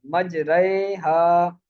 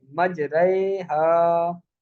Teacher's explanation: را ممالہ زیر اور یا کی طرف مائل ہونے کی وجہ سے باریک ہی پڑی جائے گی